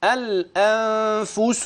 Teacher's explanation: الإخفاء من نون ساكنة أتى بعدها فاء